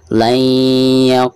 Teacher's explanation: Maka cara membaca nun sukun yang ada di sini itu harus diidghamkan ke huruf ya yang ada di depannya ya, disertai dengan gunah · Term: idgham bigunah